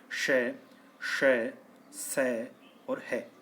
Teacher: वे व्यंजन जिनका उच्चारण करते समय मुख से अधिक श्वास निकलती है, उन्हें ऊष्म व्यंजन कहते हैं।